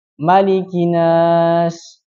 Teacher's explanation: Kemudian kesalahan berikutnya ada pada huruf nun yang bertasydid. Apa kesalahannya? Menghilangkan tasydidnya.